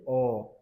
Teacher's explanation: जीभ अंदर की तरफ बीच में जो हिस्सा है वो धंस रहा है। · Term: मध्य स्वर